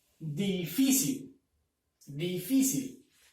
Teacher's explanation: Entonces, antepenúltima sílaba, penúltima sílaba, última sílaba. Si lleva la mayor fuerza de voz en la penúltima sílaba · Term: palabra grave